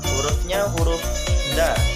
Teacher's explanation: punggung ujung lidah dan pangkal dua gigi seri muka yang atas sifatnya nafas ditahan